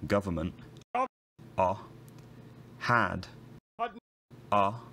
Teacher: there are low back relatively unrounded vowels in words like government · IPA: [ɑ]